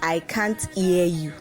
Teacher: the h sound in house or like um here doesn't exist in the portuguese language